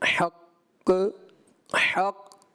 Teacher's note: یہ جو کلکلہ ہے مشدد جماؤ والا، اس کو آپ نے بہت ہی اعلیٰ درجے کا کلکلہ کرنا چاہیے تھا وقف میں. اب چونکہ آپ نے کلکلہ تو کیا، لیکن مجھے ایسا لگا کہ اس کو مزید آپ کامل کر سکتے تھے.